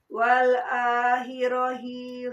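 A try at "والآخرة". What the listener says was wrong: Wal akhirati. Ya, tak marbutoh ya. Jadi tak kalau dibaca.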